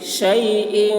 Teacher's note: شین کی آواز سیٹی جیسی